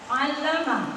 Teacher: Allama itu ada ain. Ain makhrajnya ditenggorokan tengah.